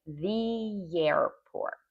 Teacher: So you add, instead of saying the, you say the, and you also add a little extra Y sound